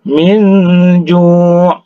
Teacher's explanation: nun mati bertemu dengan huruf jim, ya, maka dihukum ke sini ikhfa, ikhfa hakiki, ya. Ikhfa, jadi didengungkan.